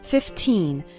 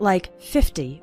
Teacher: remember to pronounce the second syllable of 15 nice and strong 15 not like 50 which is a different number 15 minutes